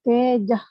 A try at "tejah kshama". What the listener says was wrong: Tejak bhi nahi, ka bhi nahi. It is tejah kshama. Tejah kshama.